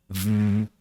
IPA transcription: v